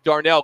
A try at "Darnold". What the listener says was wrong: Darnold. Sam Darnold. You said Darnell.